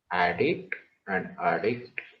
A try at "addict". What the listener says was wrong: No, yes, that's you are right, but your sound should say the difference. The difference was not there. You got the concept, but the sound difference was I could not make the difference. Addict, addict, addict, addict. So here you said rightly, it's a and dict, small dict. and here a dict is bigger. Addict, addict, addict, addict.